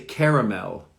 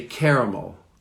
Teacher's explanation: So the L at the end is pronounced.